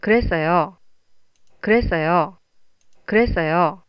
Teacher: If it goes up and then down, it sounds like you're giving the news.